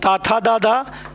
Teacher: और ता था दादा यह आपके दंत है क्या है ये इनका उच्चारण स्थान दंत है